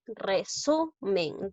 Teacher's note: observo que la mayor fuerza de voz recae en la sílaba su